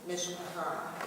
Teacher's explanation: this is pronounced with the emphasis on the end syllable